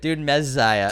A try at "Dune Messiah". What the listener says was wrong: Dune Messiah. Messiah. Messiah. more Z's, man. No more Messiah. It's not pizza. It's Messiah.